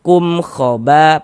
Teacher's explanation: Bunyi mim sukunnya dibaca jelas. Kemudian dibaca pendek saja. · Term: izhar syafawi